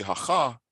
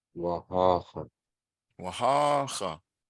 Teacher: You have to drag out the first syllable, otherwise you're in the wrong mode.